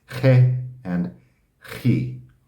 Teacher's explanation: It's like I've got a cold and I need to get something out of the back of my throat.